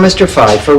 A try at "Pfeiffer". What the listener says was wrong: That's Pfeiffer. The P is not silent.